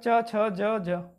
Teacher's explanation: चा वर्ग के उन्हें तालु से बोला जाता है।